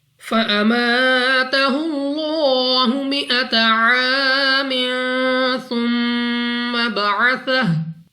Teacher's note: लाम ऑफ अल्लाह से पहले हर्फ के ऊपर है पेश, तो इस लाम ऑफ अल्लाह को पुर यानी मोटा पढ़ेंगे, मुंह और आवाज को खोलकर